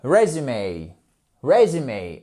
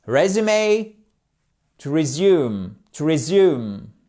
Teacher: Accentuation sur la première syllabe